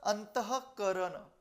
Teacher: तोंडातील जी काही हवा आहे ती एकदम सोडली जाते, त्यातून विसर्गाचा उच्चार होत असतो